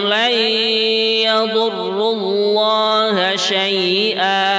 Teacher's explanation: non mati ketemu ya, namanya idgham bi gunnah ya, kita dengungkan